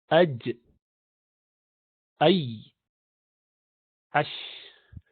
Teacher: These 3 letters come from the center part when it goes up to the top.